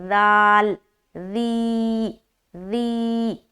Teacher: بہت ہی نرمی کے ساتھ ادا کرنا ہے بغیر سیٹی کے، سخت آواز نہیں آنی چاہیے ذال میں